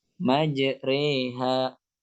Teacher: antara Alif dengan ya antara fathah dengan kasrah jadi bunyinya e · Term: imalah